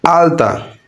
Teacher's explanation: এই আলটা শব্দের ল আসছে দন্ত থেকে